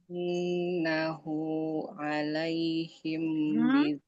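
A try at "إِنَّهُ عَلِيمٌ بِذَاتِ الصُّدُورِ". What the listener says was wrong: Innahu alimum, nggak alaihim. Innahu ke atas, innahu sesungguhnya Allah. Nggak pakai alaihim.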